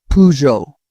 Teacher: In French, it's Peugeot without the final consonant.